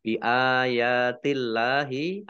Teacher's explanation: Allahnya dibaca tipis karena harokat di depannya kasroh. Lam fathah berdiri, mat tobi'i, dibaca panjang 2 harokat.